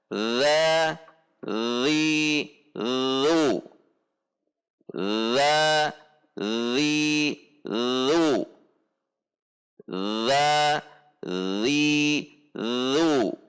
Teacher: Ketika berharokat dibunyikan dengan menekan pada titik makhraj dengan tidak mendorong udara, sehingga dibunyikan dengan cara za, zi, zu, za, zi, zu, za, zi, zu. Tidak dibaca za dengan mendorong, tetapi dengan menggesek pada titik makhraj.